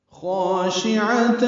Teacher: خاشعہ میں خوا پر پڑھیں گے، الف مدہ ہے تو حرکات لمبا کریں گے، اس کا الف بھی پر ہے. عین وسط حلق سے ادا کریں گے، جلدی پڑھیں گے.